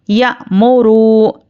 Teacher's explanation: واو پر جزم اور اس سے پہلے پیش واو مدہ ہے، اس کو ہم ایک الف کے برابر کھینچ کر پڑھیں گے